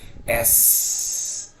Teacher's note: Yeah, that's what we call the alveolar ridge. But if you let up with the tongue a bit, and let the air seep through, you make an S fricative sound